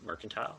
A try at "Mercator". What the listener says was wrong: It's called Mercator. There's no N.